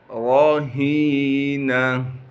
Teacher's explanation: بما کسبت رہینہ، را کو موٹا کر کے پڑھیں گے کیونکہ را پر زبر ہے، ہا کو صاف کر کے گلے سے نکالنا ہے، گلے کا وہ حصہ جو سینے کی جانب ہے۔ ہا کو آگے یا مدہ سے ملا دیں گے، یا مدہ ہونے کی وجہ سے ہا کو ایک الف کے مقدار کھینچیں گے، گول تا کو وقف میں ہا بنا دیں گے۔